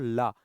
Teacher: मुंह के अंदर जो हवा बनती है वह अगल बगल से बाहर आ जाती है, और जो जिह्वा होती है तालु को स्पर्श करती है। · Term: पार्श्विक